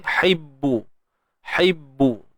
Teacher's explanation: Ba yang bersabdu baris hadapan muncung juga.